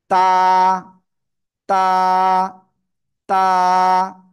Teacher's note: জিহ্বার আগা এই সামনের উপরে দুই দাঁতের গোড়ায় লাগান লাগান লাগান এই যে এভাবে লাগিয়ে সিম্পল এক আলিফটা নিয়ে উচ্চারণ